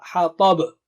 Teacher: Ha is thin, ta is very thick and high, and there is qalqala